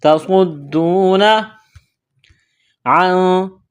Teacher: نون ساکن کے بعد سین ہے، یہاں پر اخفا کریں گے، آواز ناک میں چھپائیں گے۔